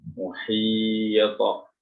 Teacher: Bagian belakang diangkat untuk memberikan ketebalan to.